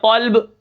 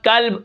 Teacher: قلب دل ہوتا ہے موٹے قاف کے ساتھ، اگر باریک کاف کے ساتھ قلب، اس کا معنی ہوتا ہے کتا